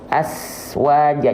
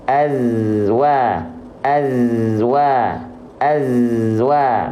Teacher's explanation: nafasnya tertahan bukan hams ya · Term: jahr